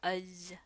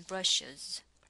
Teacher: insert a schwa before the plural morpheme z, z, when a regular noun ends in a sibilant, giving a uz sound, as in brushes.